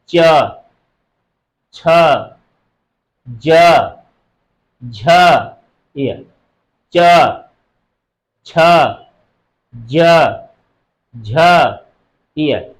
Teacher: यह जीभ हमारा ऊपर जाकर तालु पर लड़ रहा है। इसलिए च वर्ग में वे वर्ण आते हैं जो तालु से बोले जाते हैं।